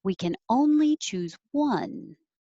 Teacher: even though one is at the end of the sentence and it has to come down, I'm going to go up and come down to emphasize it.